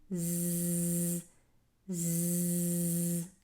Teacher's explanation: the placement of our tongue when we're saying these two letters the za also has an additional characteristic called safir which is this whistling sound